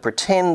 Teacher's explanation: in the word pretend the second syllable is stressed